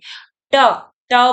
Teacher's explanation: बोलते समय हमारी जो जीभ है वह हमारे अंदर के तालू को क्या कर रही है स्पर्श कर रही है